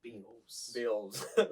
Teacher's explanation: 普 段 は あ ん ま り T を 発 音 し な い Beatles な ん だ よ ね。